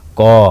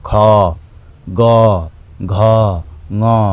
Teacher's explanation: उच्चारण हुँदाखेरि हाम्रो घाँटीबाट उच्चारण हुन्छ, यो घाँटीमा छोइन्छ यसले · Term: कण्ठ्य